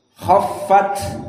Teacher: Maka sama khaffat ta as-sakinah hams harus dikeluarkan, not khaffat and silent, but you must exit an-nafs.